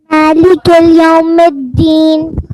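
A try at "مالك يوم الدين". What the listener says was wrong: اچھا پیارے بچے مالکی اور یوم کے درمیان الف لام نہیں ہے اس لیے لام کی ساؤنڈ نہیں آئے گی. مالکی یوم الدین پڑھیے.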